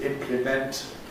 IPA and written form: ˈɪmplɪment (implement)